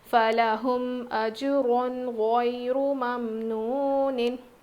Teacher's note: یا لین ہے، را پر پیش ہے موٹا پڑھیں گے